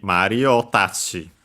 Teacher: So low, high, high. So high until included the O. And then tachi itself, low, low, low.